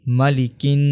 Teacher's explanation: اسی طرح آگے مالک الناس، میم زبر ما، لام زیر لی، ملی۔ کاف کو ملائیں گے ڈائریکٹ نون کے ساتھ، الف اور لام کو نہیں پڑھیں گے۔ کاف نون زیر کن، مالکن، نون الف زبر نا، مالکن نا، سین زیر سی، مالکن ناسی۔